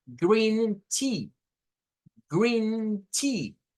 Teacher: Doble E equivale a un sonido I, o sea, la I larga.